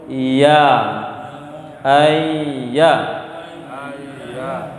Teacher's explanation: Ya ini huruf rokhawah, mengalirkan suara. Ya, ya. Karena itu ketika ya bertasydid tidak boleh berhenti suara.